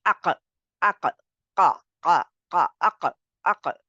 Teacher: For a second, the tongue goes up and block the passage of air, and it's feel like you might will choke if you keep tongue there for longer time. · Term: qaf